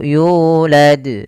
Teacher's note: di sini pada lafal yu ada mad tabi'i, panjangnya 2 harakat